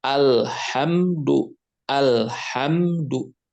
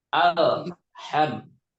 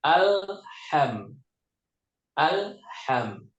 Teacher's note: di huruf lam ujung lidah ujung lidah ya ditekan ke gusi atas